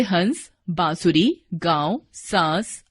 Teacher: वर्ण के ऊपर लगने वाले चंद्रबिंदु को अनुनासिक कहते हैं। इसका उच्चारण नाक और गले से होता है।